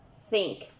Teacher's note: their stream shall flow between the upper teeth and the tongue notice that is a voiceless fricative consonant that means it is produced by the frictions of the error